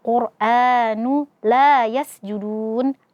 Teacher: lam yang fathah setelahnya ada alif. Maka di sini mad asli dibaca dua harakat.